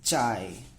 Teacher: The ch sound without any aspiration, unaspirated.